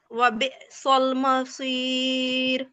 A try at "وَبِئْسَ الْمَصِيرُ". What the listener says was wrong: سین کو موٹا نہیں کرنا باریک کرنا ہے باقی بہت اچھا ہے ماشاءاللہ سین کو باریک کر کے سنائیں وبئس المصیر